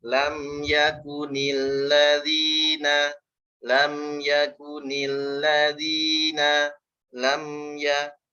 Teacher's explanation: Mimnya ngalir ya, jangan mantul, jangan lama. Nah, mim punya sifat bainiyah, dialirkan sedikit suaranya.